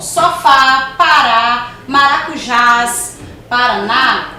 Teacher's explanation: Oxítonas são palavras cuja sílaba tônica é a última sílaba que é mais forte